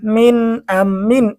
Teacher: নুন সাকিনের পরে ইজহারে হরফ হামজা এসেছে, গুন্না ছাড়া স্পষ্ট পড়তে হবে। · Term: নুন সাকিনের ইজহার